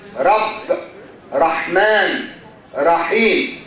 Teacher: the tip of the tongue goes up and touches the palate. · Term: Arabic re